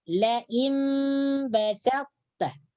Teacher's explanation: Di sini hurufnya berbeda, tetapi makhrajnya sama. Ta dengan ta makhrajnya sama. Ujung lidah menyentuh pangkal gigi atas. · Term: idgham nakis